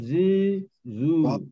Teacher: kita terasa macam ada gegaran sikit bila dia tersentuh dengan hujung gigi